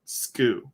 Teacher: the u almost doesn't happen it kind of just skew right into the next uh syllable